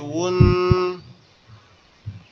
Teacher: এটা মাঝখানে একটা ওয়াও আসছে, ওয়াওটা হচ্ছে দুই ঠোঁট থেকে উচ্চারিত হবে